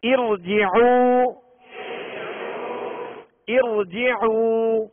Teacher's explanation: اب اس را ساکنہ سے پہلے زیر عارضی ہے لہذا را کو پر پڑھیں گے